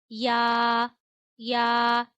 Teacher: या या नरमी से पढ़ना है और जबान के दरमियान और तालू के दरमियान से अदा करना है।